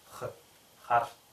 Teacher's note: В слове хар гласная с заднего ряда, щелевая с заднего ряда.